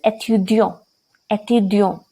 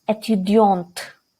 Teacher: So when we pronounce étudiant, there is no sound of t. Why? Because e, it is not followed by a vowel.